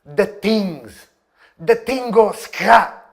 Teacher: a gente até tenta fazer o TH, mas a gente transforma ele num som de D ou T. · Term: TH stopping